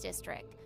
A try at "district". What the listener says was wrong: District? You don't pronounce the T? What's wrong with you?